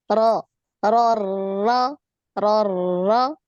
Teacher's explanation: Hati-hati takrirnya. Jangan terlalu banyak getaran.